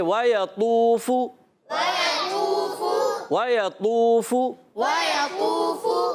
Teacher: فا کا مخرج ہے اوپر والے دانتوں کے کنارے، جب نیچے والے ہونٹ کے تر حصے سے لگتے ہیں تو ادا ہوتا ہے فا